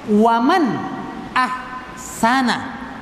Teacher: nun sukun ketemu dengan Hamzah harus dibaca jelas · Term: izhar halqi